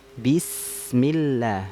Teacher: Nah, jangan miring, jangan bismillahi, tapi bismillah, nah, bi ya, bukan vokalnya e tapi i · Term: vokalnya i